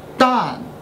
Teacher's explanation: So we call it Dan, falling tone again.